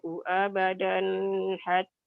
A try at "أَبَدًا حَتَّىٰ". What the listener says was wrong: Abadannya idhar, jangan ditahan. Abadan hatta tu'minu.